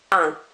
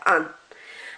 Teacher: You're barely pronouncing that N at the end. It's just slightly there